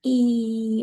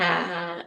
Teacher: the e, which is a very high vowel versus the a, which is a low vowel